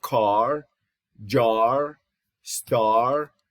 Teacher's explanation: it is a low back unrounded tense, or low back tense unrounded vowel